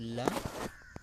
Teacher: ला पार्श्विक व्यंजन है